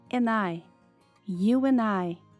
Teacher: Junte o and com I e tire o D.